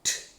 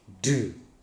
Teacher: But whereas this one is voiceless, t, voiceless, d, voiced